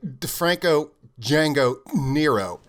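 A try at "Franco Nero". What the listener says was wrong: The D is silent.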